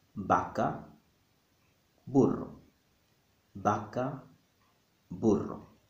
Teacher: in Spanish, the letter V and the letter B sound exactly the same